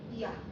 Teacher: 그러면 이를 짧게 발음해서 만들 수 있는, 우리가 단모음이 결합해서 만들 수 있는 이중모음은 어떤 게 있냐? 이를 짧게 발음하고 그 다음에 아를 제대로 발음해보자